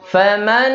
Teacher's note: Ya, ini cara pengucapannya jadi faman. Nah, huruf yang pertamanya sempurna jadi hilang. Kenapa? Karena dia langsung masuk ke nun yang kedua.